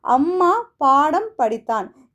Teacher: இதில் பார்த்தீங்கன்னா அம்மா பாடம் படித்தான் இந்த சொற்களில் மகர மெய்யெழுத்து தனக்குரிய அரை மாத்திரை அளவில் முழுமையாக ஒழிக்கிறது. பாருங்கள், அம்மான்னு சொல்லி பாருங்கள், இந்த இம் வந்து முழுமையாக நம்ம உச்சரிப்பு தரும்.